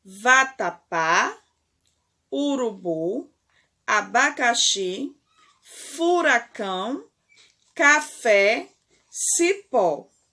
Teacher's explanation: a última sílaba de todas as palavras que você leu acima é tônica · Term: oxítona, sílaba tônica